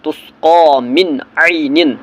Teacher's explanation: عین حرف حلقی ہے، اس لیے یہاں پر نون ساکن کو ظاہر کر کے اظہار کرنا ہے